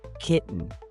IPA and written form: ˈkɪʔn (kitten)